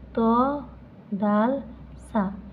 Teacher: জিহ্বার অগ্রভাগ উপরে 2 দাঁতের গোড়ার সাথে লাগিয়া উচ্চারিত হয়।